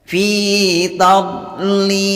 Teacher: Tidak boleh memantul karena huruf dot bukan termasuk huruf qalqalah. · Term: dot sukun